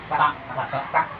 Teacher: ta itu berarti kan ujung lidah atas bertemu dengan langit-langit atas tuh sebelum gigi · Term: makron huruf ta